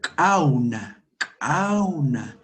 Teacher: Es al fondo con postvelar, con la parte postvelar de nuestro aparato fonador.